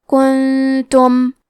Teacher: کلمت کنتم میں نون ساکن ہے، پھر حرف التا ہے، تو یہاں حکم ہے اخفاء، ہم یہ حکم کو غنہ کے ساتھ ادا کریں گے